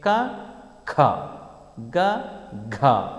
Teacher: కంఠ సహాయముచ్చే పలకబడతాయి కాబట్టి కంచెములు అంటారు. కంచెములు అనగా కంఠ సహాయముచ్చే పలకబడేవి